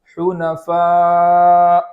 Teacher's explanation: مد ادا کرنے کے بعد حمزہ کو خوب جھٹکے کے ساتھ پڑھیں گے